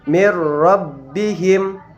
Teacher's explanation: Karena ro ini adalah salah satu huruf daripada idgham bila gunnah, maka cara membacanya adalah memasukkan dengan tanpa disertai dengung